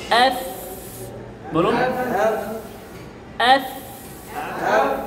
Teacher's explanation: সামনের উপরে 2 দাঁত আর নিচের ঠোঁটের ভেজা অংশ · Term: ফায়ের মাখরাজ